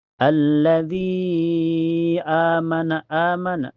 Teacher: Setelahnya ada hukum mad badal karena hamzah ketemu alif. Cara bacanya panjang, cukup 2 harokat sama dengan mad tabi'i ya.